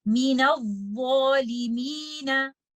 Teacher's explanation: make sure your alif mad is heavy because dha is a letter of isti'ala and the alif mad which will come after letter dha will be recited with tafkhim and we will recite this word like this.